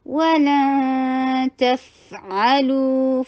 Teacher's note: long, و short, اخفاء ہے، تا کے مخرج کی طرف جائیے، نون کو چھپا لیجئے اور ناک میں ہی آواز کو ٹھہرائیے ، اخفاء میں غنہ بے حد ضروری ہوتا ہے، وَلَن تَفْعَلُوا،